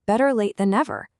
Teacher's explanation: See that hard T and better just vanished. It became a soft D.